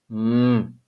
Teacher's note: if we put our two lips together and then allow the air to move through our nasal cavity, so we use our two lips and the nasal cavity, we make the sound m, the sound of the letter M.